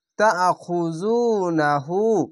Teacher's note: ওয়া কাইফা, ওয়া জবর ওয়া, কাফ ইয়া জবর কাই, ওয়া কাই, ফা জবর ফা, ওয়া কাইফা, ওয়া কাইফা তাখুজুনাহু। উল্টা পেশে এক আলিফ টেনে পড়বেন, পেশের পাশে ওয়াও সাকিন এক আলিফ টেনে পড়বেন।